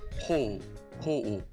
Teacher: It's like you're pronouncing two o separately.